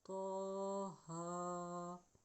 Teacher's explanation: طا کے اوپر کھڑی زبر ہے، ہا کے اوپر کھڑی زبر ہے، دونوں پہ کھڑی زبر ہے اس لیے دونوں کو 1 سیکنڈ تک لمبا کریں گے